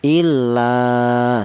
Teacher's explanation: Alasannya ada alif yang dial huruf yang berharakat fathah dibaca mad tha thobi'i. Panjangnya satu alif atau dua harakat atau dua ketukan.